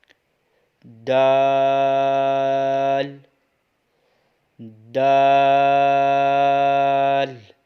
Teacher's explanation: اوپر کے دانتوں کی جڑ سے جب زبان کی نوک لگے گی تو یہ دال ادا ہوگا